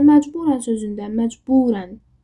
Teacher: məcburən burda u həm uzanır, həm də vurğu uya düşür.